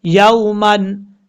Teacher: یا کے بعد واو لین ہے، لمبا نہیں کریں گے اس کو